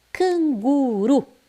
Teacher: entre duas vogais e eu não falo Canguru não é canguru é o r Brando Ele está entre duas vogais então eu eu falo ele fraquinho